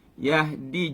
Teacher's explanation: Yahdi juga jangan yah. Jangan ada angin.